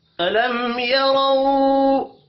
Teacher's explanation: میم ساکن کے بعد یا ہے، اظہار شفی ہوگا، غنہ نہیں ہوگا. یا رو را کے اوپر زبر ہے، را کو پر پڑھیں گے.